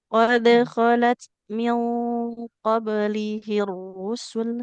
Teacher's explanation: huruf ta'nya mengalirkan nafas